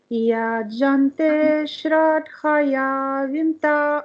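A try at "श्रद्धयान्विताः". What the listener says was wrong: don't say dha. Okay, it's not dha, it's a dha. Be very clear with its dental. Da, ta, tha, da, dha. So it comes with a dental. Don't say da. Da is different. So bring your tongue a little far to the teeth. Touch the teeth. Shraddha.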